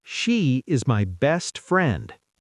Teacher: I want you to stress the word best.